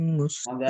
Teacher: ketika nanti membaca surah Al-Qamar mustamir itu bacanya Tebal